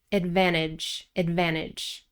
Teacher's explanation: Americans usually drop the T after the N